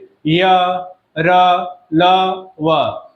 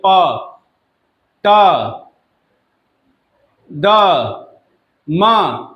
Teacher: तो ये जो शब्द आप बोलेंगे तो जीभ जो है मुख के किसी भाग से स्पर्श नहीं कर रहा है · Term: अंतस्थ व्यंजन